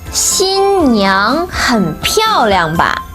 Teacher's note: 新 first tone, 娘 second tone